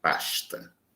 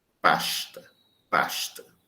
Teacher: Em alguns dialetos brasileiros, como carioca, o S em final de sílaba é pronunciado como uma consoante chiante